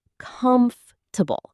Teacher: The stress is on the first part, comfortable. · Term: stressed syllable